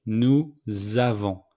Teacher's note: we make the liaison between nous and avons. So the S became a Z. Nous avons.